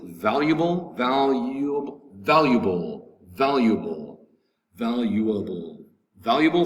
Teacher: three syllables valuable with the accent over the first syllable